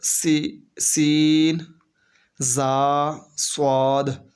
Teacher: کو ادا کرتے وقت سیٹی کی طرح تیز آواز نکلتی ہے، اس لیے ان حروف کو حروف صفیریہ یعنی سیٹی والے حروف کہتے ہیں۔